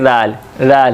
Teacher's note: राल वैसी ही जैसे सा है, ज़बान की नोक दांतों के दरमियान, जैसे सा पढ़ते हैं वैसे ही रैल, रैल नरमी के साथ